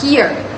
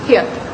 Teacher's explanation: This reflects rhoticity, indicating that the R sounds at the end is fully articulated.